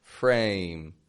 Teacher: It's got that Y glide on it.